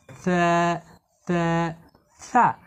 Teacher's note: এই সা হরফের মাখরাজ হলো জিহুবার আগা। সা হরফকে জিহুবার আগা এবং উপরের দুই দাঁতের আগা মিলিয়ে নরম করে পড়তে হয়